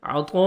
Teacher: الف مدہ کے بعد اسی کلمہ میں حمزہ ہے، مد واجب یا مد لازم 3 سے 4 سیکنڈ ایکسٹرا آپ نے مد کرنی ہے